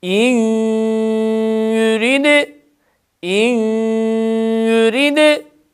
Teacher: Bu idgam olunan harfin harekesi mazmum olduğu için dudaklarımız hemen ileriye çıkıyor ve dudaklar ilerideyken gunneyi yapıyoruz.